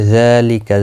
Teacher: ذال کے اوپر کھڑی زبر ہے، ایک الف کی مقدار کے برابر کھینچ کر پڑھیں گے.